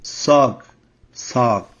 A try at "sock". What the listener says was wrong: Now, sound like you said suck. You want to say sock, soak.